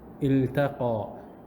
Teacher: But because it's a verb, the lam will be pronounced clearly.